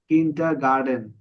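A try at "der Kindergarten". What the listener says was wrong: গার্ডেন না তো, টেন। কিন্ডা হ্যাঁ, কিন্ডা গার্ডেন। হ্যাঁ, মানে হচ্ছে কিন্ডার গার্ডেন।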